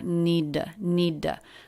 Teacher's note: it's a flap it's not a true t sound it's more like a d